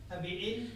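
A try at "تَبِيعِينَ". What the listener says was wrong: B-nya 2 harokat loh, ya-nya masih ada loh.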